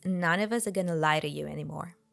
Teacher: three words in this cocation would always be pronounced as one the F sound turns into V